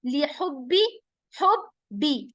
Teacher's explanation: बा के ऊपर तजदीद है तो बा सख्ती के साथ दो बार हम प्रोनाउंस करेंगे